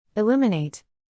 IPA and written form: ɪˈluː.mə.neɪt (Illuminate)